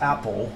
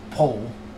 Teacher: So L L at the end of the word becomes W.